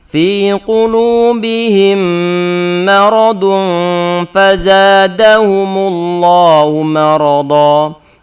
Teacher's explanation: Fi qulubihim mim sukun bertemu dengan mim berikutnya. Maka mim pertama diidghamkan dalam mim yang kedua sehingga menjadi satu mim yang bertasydid. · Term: gunnah